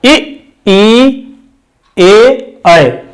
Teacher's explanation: जीभ के प्रयोग के आधार पर स्वर 3 प्रकार के होते हैं, जिसमें पहला नंबर है अग्र स्वर, जिसमें इ, ई, ए, ऐ, ये 4 स्वर अग्र स्वर कहलाते हैं, जिनको बोलने में जीभ का आगे वाला भाग प्रयुक्त होता